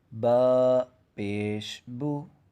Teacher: ہمارے ہونٹ جو ہیں تھوڑے سے گول ہوں گے، یعنی کہ پیش ہمیشہ تھوڑا سا گلائی کے اندر ادا ہوتا ہے، ٹھیک ہے، اور اس کی آواز بھی اوپر کی طرف ہوتی ہے۔